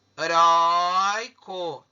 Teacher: Tá vendo que a sílaba tônica é na penúltima? Toda vez que a sílaba tônica for na penúltima, a gente tem uma paroxítona.